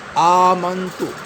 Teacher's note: حمزے کے اوپر کھڑا زبر ہے، اسے ہم لمبا کریں گے، کھینچیں گے ایک الف کی مقدار